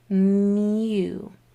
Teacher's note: This long U sound says its whole name, U, because my mouth was already in that shape when it made the M sound